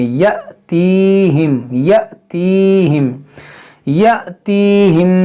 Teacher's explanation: گے۔ یہاں پر دیکھیں یہ الف پر جو ہے حمزہ ہے، یہ حمزہ پر حمزہ ساکنہ ہے تو اس کو جھٹکا دے کر پڑھیں گے،